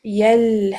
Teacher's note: So therefore we say the relationship of these two letters from the makhraj and the sifat wise is tajanus. Tha will be merging into the dal when you read them together.